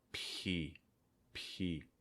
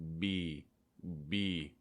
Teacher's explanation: they have the same mouth position where you're just pressing your lips together but for the b sound make sure your throat is vibrating